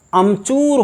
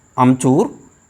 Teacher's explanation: ह्रस्वीकरण दीर्घ को ह्रस्व हो जाता है, जैसे आम, चूर। तो आम में जो दीर्घ आ है उस दीर्घ आ के स्थान पर ह्रस्व आ हो गया है और आमचूर की जगह अमचूर हो जाता है।